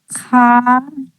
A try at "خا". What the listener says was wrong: کھا نہیں، خا. چلیں کوشش کریں. کھا نہیں، خا. خا. کھا نہیں، اس کو خا ہلکا موٹا پر کر کے بولنا ہے، یعنی خا. اور کھینچتے ہوئے بولیے اس کو پر کر کے، خا.